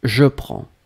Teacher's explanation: you don't pronounce the S and you don't pronounce the D, but it should be there.